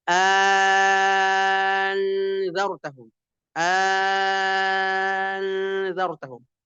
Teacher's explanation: tasilsaniah atau ibdalsaniah huruf kedua, hamzah kedua diganti jadi mad menjadi anzartaahu anzartaahum.